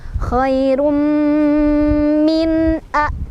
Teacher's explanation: Khairum, sampai kerasa ke hidung dulu, baru lepasin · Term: idgham bi gunnah